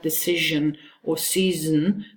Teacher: In a word like decision or season, the zn at the end is one syllable.